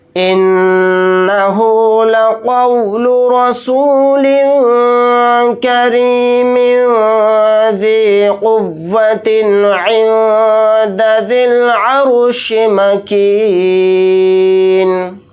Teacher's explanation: پھر نون ساکن کے بعد دال ہے تو اس میں اخفا کا قاعدہ یہاں پر ہو رہا ہے، تو نون کی آواز کو ناک میں چھپا کر اخفا کے ساتھ پڑھیں گے۔ یہاں پر نون کو ساکن بنا کر پڑھیں گے حالت وقف میں۔